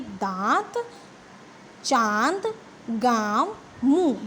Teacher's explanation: जब आप इनको बोलेंगे तो जो वायु है वो नाक से और मुंह दोनों से बाहर आती है। देखिए आपका मुंह खुलता है और मुंह से भी और नाक से दोनों से वायु बाहर आएगी, तो ये है अनुनासिक।